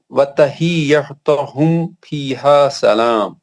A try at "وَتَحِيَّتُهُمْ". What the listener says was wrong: تجدید آ گئی تو کیا بولا ہم نے, سختی سے پڑھنا. ہاں تجدید کو صحیح کریں.